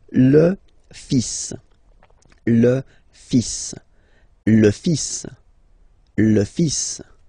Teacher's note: So it's le, and then even if you've got this L, well, basically you don't pronounce it, and then strangely you pronounce the final S